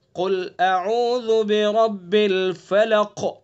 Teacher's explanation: नरमी से पढ़ेंगे कुल अऊज़ु बिरब्बिल फलक, बिरब्बिल फलक। रा को पुर करेंगे और काफ के अंदर कलकला करेंगे और इसको पुर भी करेंगे। कलकला कहते हैं आवाज को पीछे लौटाएंगे।